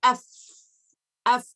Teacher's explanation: let the sound run let the sound Run f no vibration